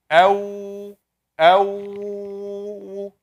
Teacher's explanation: Two lips getting together, round, making a round shape, give you the wa sound. Ba, ab, getting together, touching and releasing.